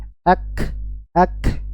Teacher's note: Sifat yang pertama adalah syiddah. Suara tertahan, aliran suara tertahan ya. Ak, nggak ada yang mengalir suaranya.